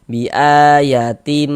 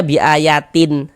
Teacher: Karena di sini yang kita temui tanwin, maka bunyi tanwinnya dimasukkan, melebur dia ke huruf mim. Sehingga ini kita baca bi ayatim, jangan dibaca bi ayatin, tin, jangan, tapi tim. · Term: idgham bi gunnah